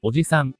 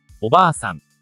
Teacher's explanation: Mapapansin natin na humaba ang tunog sa pamamagitan ng pagdaragdag ng kaparehong patinig.